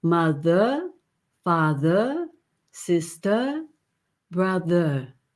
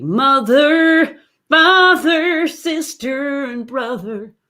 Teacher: this is part of what i call soul pronunciation this softer or not really an r at all it's an r but it's a vowel